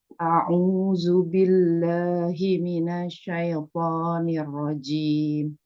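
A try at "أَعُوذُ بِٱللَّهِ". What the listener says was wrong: Ya, mohon maaf, Bu. Jangan a'udzu, jangan Z, tapi ujung lidah sini. Za.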